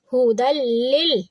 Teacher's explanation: دال کو لام سے ملائیں گے، لام کو لام سے ملائیں گے، ہو دل لل، لام کے نیچے زیر ہے تو باریک کریں گے، تا کو نرمی سے پڑھیں گے لیکن تھوڑا سا اس کو مضبوطی سے پڑھیں گے کیونکہ اس کے اوپر ہے تشدید۔